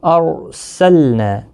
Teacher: ارسلنا، رو ساکن سے پہلے زبر ہے اس لیے رو ساکن پر پڑا جائے گا، لام ساکن کو ہلانا نہیں، نا الف مدہ ہے، 1 الف کی مقدار کے برابر کھینچ کر پڑھیں گے